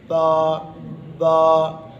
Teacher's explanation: دونوں ہونٹ کا اندر کا جو تر حصہ ہے وہ آپس میں جب ملتے ہیں تو با ادا ہوتا ہے